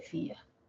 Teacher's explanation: en fía es un yato porque la mayor fuerza de voz lo tiene la í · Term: yato acentual